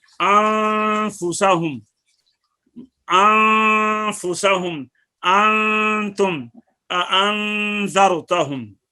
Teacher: इसी तरह बाकी जो 15 हरूफ हैं इनमें से कोई हरफ आ जाए तो उनके अंदर इख्फा करो اور اخفا کا ترجمہ میں نے اس کا طریقہ آپ کو بتایا ہے کہ نون کو ادا کرتے وقت زبان کو مخرج کے قریب لگا کر ایک الف کی مقدار میں ناک سے آواز بڑھا کر غنہ زمانی کے ساتھ نون کو جو ہے وہ ادا کریں گے. جیسے انفسہم، انفسہم، انتم، انذرتہم.